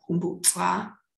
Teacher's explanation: So the modifier humbu has all low tones, and as such, it doesn't trigger the lowering of the tone pattern of the head. So twa, which has a rising tone when it is on its own, still has that rising tone in cow's tail, humbu twa.